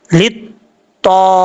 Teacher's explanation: लाम ज़ेर ता, लित्ता, ता ज़बर अलिफ ता, लित्ता, ता हुरूफ मुस्तालिया में से है, पुर पढ़ा जाएगा